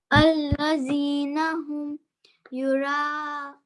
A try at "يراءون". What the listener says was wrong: थोड़ा सा छोटा हो गया, युराऊन,